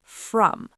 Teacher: not a strong rolled r like in some languages. It's more of a soft rounded R sound